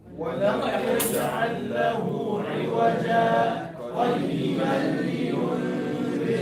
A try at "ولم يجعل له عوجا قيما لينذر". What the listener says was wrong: A little bit shorter. ولم يجعل له عوجا قيما لينذر.